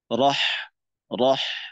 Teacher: আমরা জানি র মোটা পাতলা হয় তো এখানে র তাশরিদর যুক্ত র এর সাথে জবর আছে সুতরাং র টা এখানে মোটা করে পড়তে হবে